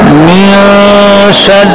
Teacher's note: نون کے اندر غنہ ہے اخفا کا